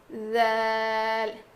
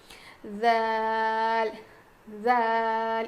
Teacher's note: ہماری زبان کی نوک جو ہے وہ سامنے کے دانتوں کے کنارے کو لگے گی اور تھوڑی سی زبان کی نوک باہر نکلے گی